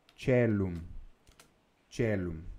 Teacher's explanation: tanto esse ditongo, AE, quanto o ditongo OE, é pronunciado com o som do E